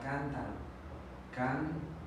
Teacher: Aquí vemos que la sílaba tónica es la antepenúltima. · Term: esdrújulas